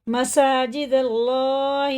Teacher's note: دیکھیں دال اللہ کے نام میں لگتی ہے زبر کے ساتھ، تو زبر کے ساتھ جب اللہ کا نام آتا ہے تو پر پڑھا جاتا ہے، یعنی منہ بھر کے موٹا کر کے پڑھا جاتا ہے